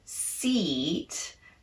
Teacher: if the word is seat, we have to keep the duration of that long E, seat, and not shorten it, because then it might sound like sit.